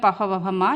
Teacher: ये ओष्ठ यानी होठ से बोले जाते हैं